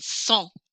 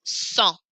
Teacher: This word sang, I don't hear the G on the end.